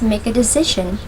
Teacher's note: in the phrase make a decision the stress falls on the word decision